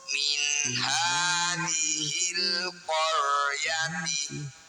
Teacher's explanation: Alif diikuti lam sukun disebut bacaan izhar qamariyah atau alif lam qamariyah. Cara bacanya lam sukun dibaca jelas.